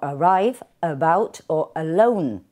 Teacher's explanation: Por otro lado, tenemos palabras como arrive, about o alone, que la sílaba débil es la primera, corresponde con el grafema A, pero escuchamos la E de la schwa